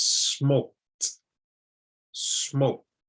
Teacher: You can hear in both of these that I'm adding almost a T sound at the end of it.